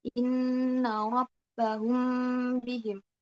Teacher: Ikhfa syafawi ini dibacanya dengung ketika huruf mim sakinah bertemu dengan huruf ba.